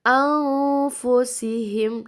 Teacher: Kemudian yang bergaris hitam itu hukumnya ikhfa. Ikhfa berbunyi samar atau dengung. Jadi nun mati, di situ nun mati bertemu fa.